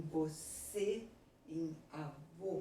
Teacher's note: acento circunflexo ele vai determinar o timbre fechado